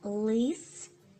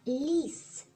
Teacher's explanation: в першому випадку у нас звук л твердий а у слові ліс м'який